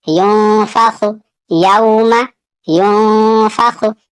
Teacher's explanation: यहाँ नून साकिन के बाद फा है, फा हरूफ इख्फा में से है, यहाँ पे भी इख्फा होगा